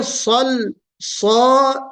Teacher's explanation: صاد کے اندر استعلا یعنی موٹا پڑھا جانے کی صفت، اور لام کے اندر استفال.